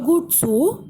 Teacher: Hör gut zu, then we have a straight intonation to indicate that the sentence is not yet over.